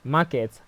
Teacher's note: Market has the stress on the first syllable